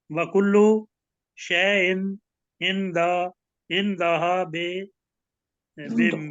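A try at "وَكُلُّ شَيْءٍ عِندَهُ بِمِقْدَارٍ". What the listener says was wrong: ہاں نہیں بس یہاں پہ اب دیکھیں اندہو ہے, ہاں نہیں ہے, یہ الٹی اندہو بمقدار. رے نہیں پڑھنا ہے اس کو, بمقدار, کیونکہ آگے وقف کرنا ہے آپ نے.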